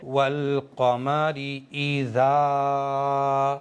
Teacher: الف سے پہلے زبر ہے، اس لیے الف کو یہاں پر ایک الف کے برابر کھینچ کر کے پڑھیں گے